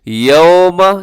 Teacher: یوم، یہاں اس کو واو لین ہے تو نرمی کے ساتھ پڑھنا ہے، مجھول نہیں پڑھنا ہے اس کو